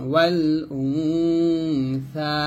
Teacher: সা পাতলা করে জিহ্বার আগে উপরে আগা লাগাবেন